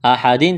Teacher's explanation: تنوین کے بعد میم ہے، میم مشدد ہے، غنہ کریں گے، آواز ناک میں چھپائیں گے